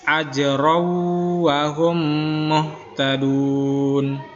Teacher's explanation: Selanjutnya di sini lagi itu bacaan ran menghadapi waw. Ya, ketika huruf ran itu menghadapi waw, maka dia bunyi n-nya itu tidak ada. Langsung masuk ke huruf waw.